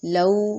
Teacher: واو پہ ہونٹ گول ہوں گے. لو واو لین ہے، واو ساکن سے پہلے زبر ہے اور لین کے دو حروف ہوتے ہیں، یاء لین اور واو لین.